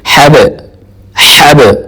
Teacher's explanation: اس کو با کے اوپر سکون ہے اور قاعدہ یہی ہے کہ اگر با کے اوپر سکون آ جائے تو اس کے اوپر قلقلہ کرنا ہے, مطلب آواز کو جھٹکے کے ساتھ حرکت دیتے ہوئے ڈبل آواز نکالنی ہے